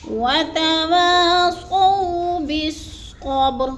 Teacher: وتوا کی واو کو لمبا کرنا ہے، کیونکہ الف خالی سے پہلے واو کے پر زبر ہے تو الف مدہ، الف مدہ کو 1 سے 2 الف کے برابر لمبا کر کے پڑھنا ہے۔ اور سو ادھر بولین ہے، اس کو لمبا بھی نہیں کرنا اور جھٹکا بھی نہیں دینا۔